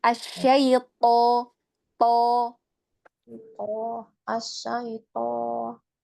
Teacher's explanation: harus pangkal lidah belakang yang hampir menyentuh langit-langit ya